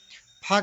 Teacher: स्पर्श, ओष्ठ, महाप्राण, अघोष व्यंजन।